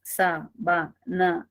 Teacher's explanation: Si tengo la palabra sábana e identifico 3 sílabas, sa-ba-na, y tengo que la primera es la sílaba tónica